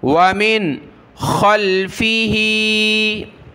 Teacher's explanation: नून साकिन के बाद खा है तो यहाँ नाक में आवाज़ पैदा नहीं होगी, हुरूफ हल्की का हरफ है खा।